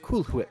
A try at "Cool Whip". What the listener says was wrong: Cool Whip. Why are you putting so much emphasis on the H?